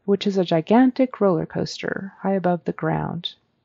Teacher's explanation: When she says the phrase, which is a gigantic roller coaster, I didn't hear the is.